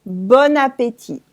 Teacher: That’s la liaison between the end of “bon” and the A of “appétit”. “Bon appétit” all together.